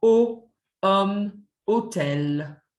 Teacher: So we never hear that H sound. O, hôtel. T at the end of a noun, and especially words that end in T-I-O-N, are pronounced like an S.